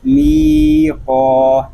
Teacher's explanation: میم یا زیر می، قاف الف زبر قا، می قا، اس کو می قا نہیں پڑھیں گے، ٹھیک ہے؟ میم کو ہم کھینچ کر پڑھیں گے کیونکہ یہاں پہ یا مدہ ہو رہا ہے، اور قاف کو بھی ایک الف تک کھینچ کر پڑھیں گے کہ یہاں پہ الف مدہ ہو رہا ہے۔